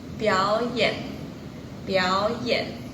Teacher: kok kata biao ini meskipun nada 3, tapi grafik nadanya seperti vokal nada 2 · kalau kata pertamanya itu nada ketiga dan kata kedua juga bernada 3, kata pertamanya ini bakal jadi nada kedua loh teman-teman.